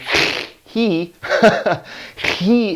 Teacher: he is aspirated, which means that air flows through